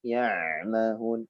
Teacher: Ain juga sifat tawassutnya pertengahannya yang harus diperhatikan. Memanjang tapi tidak terlalu panjang.